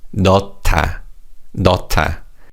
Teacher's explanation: the 히읗 받침 in the first syllable combines with the 디귿 in the second syllable to make a T sound